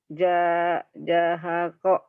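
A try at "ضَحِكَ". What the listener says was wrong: Za-nya panjang. Zahako.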